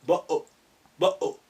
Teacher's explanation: when they say bottle, instead of pronouncing the T at the end, they say bo-o, bo-o. Then glottal stop.